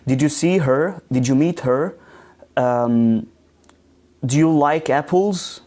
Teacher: your intonation Rises at the end of the question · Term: rising intonation